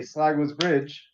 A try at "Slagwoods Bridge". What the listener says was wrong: It sounded like you said slagless bridge.